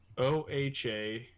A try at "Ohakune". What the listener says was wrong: The H is silent. KUNE. I mean, is it really an accident if that's how it's supposed to be said? Yeah. Owakuni.